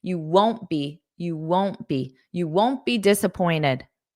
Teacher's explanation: Notice I don't push out that T.